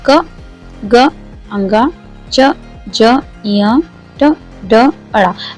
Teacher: बात आपको अच्छे से समझ में आ गई होगी कि अल्पप्राण वे होते हैं, उन व्यंजनों को हम कहते हैं, उन अक्षरों को हम कहते हैं जिनके उच्चारण में हमारी शक्ति भी कम लगती है और वायु की मात्रा भी कम प्रसारित होती है